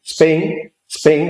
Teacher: es posible en cabeza silábica tener una sibilante más una oclusiva